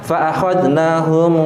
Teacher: Yaitu ketika baca M-nya ini dia merapat di bibir, tapi dia tidak ada penekanan. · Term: Ikhfa safawi